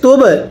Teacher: এরপরে তা বা পেশ তুব, এই যে বায়ে যদি সাকিন হয় কলকলা করে পড়তে হয়